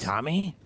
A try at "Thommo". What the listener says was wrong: Thommo. Thommo. With an O.